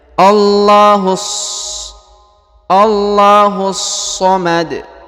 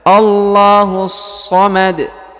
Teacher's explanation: langsung ke huruf so dan ditahan serta ditekan ya. Karena di sini ada tanda tasdid ya.